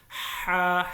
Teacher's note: ایک الف کے برابر لمبا کر کے پڑھیں گے اور اس کی آواز جو ہے حلق سے آنی چاہیے، ہا، حلق کے مڈ سے، درمیان سے، ہا۔